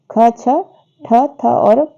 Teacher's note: ख, छ, ठ, थ और फ जो है ये महाप्राण व्यंजन है